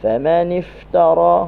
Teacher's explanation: huruf fa lepaskan suara dan angin, hujung gigi atas dengan bawah yang basah. Famanif, lepaskan suara dan angin.